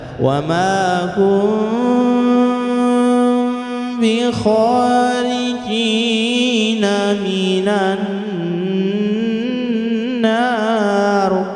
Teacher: Ini jadi itu ada mem sukun yang kita garis bawahi bertemu dengan huruf ba. Ini bacaan ikhfa syafawi, maka baca samar-samar ya. Masih posisi memnya itu harus samar karena dia di depannya berhadapan dengan huruf ba.